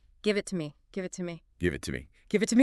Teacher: when you say to in this context it almost sounds like a soft R